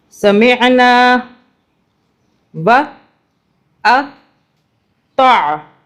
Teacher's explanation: نون کے بعد ایک الف کی آواز سے کھینچا